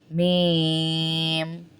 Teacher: ہونٹوں والا حرف ہے. بند ہوں گے ہونٹ پھر کھولیں گے.